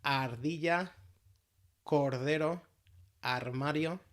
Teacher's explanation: we start with the flapped or tapped R